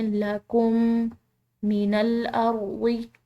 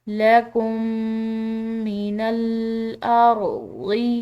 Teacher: تو جہاں پر بھی ایسا ہو کہ دو میم ہو، پہلا میم ساکن ہو دوسرا میم مشدد ہو، تو ان دونوں میم کو آپس میں ملا کر ایک میم کی طرح پڑھا جاتا ہے